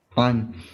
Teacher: So ayn, middle throat.